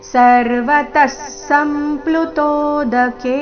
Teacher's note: ಸ ನಂತರ ಮೂರು ವ್ಯಂಜನಗಳಿಂದ ಕೂಡಿದ ಸಂಯುಕ್ತಕ್ಷರ ಅರ್ಧಮ ಅರ್ಧಪ ಪೂರ್ತಿ ಲು ರಸ್ವ